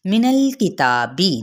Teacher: نون کی زبر کو لام کے ساتھ ملائیں گے لیکن لام کو ہلائیں گے نہیں۔ ہلانے سے مراد یہ نہیں ہوتا کہ پکڑ کے ہلانا، نہیں، اپنی زبان کے اندر ہی مخرج کے اندر ہلا دینا۔